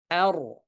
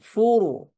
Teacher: র কে যদি ফাতহা দিয়ে এবং দম্মা দিয়ে সুকুন করা হয়, তাহলেও রটি কি হবে? মোটা হবে। ঠিক আছে? অর্থাৎ হেভি সাউন্ডে উচ্চারিত হবে।